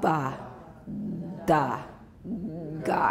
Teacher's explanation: And you've got that rumble in your throat. That's the voicing. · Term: fully voiced stops